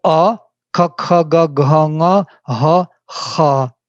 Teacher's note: All in the same position, back tongue.